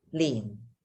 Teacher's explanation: this is your fourth tone so remember it's that low falling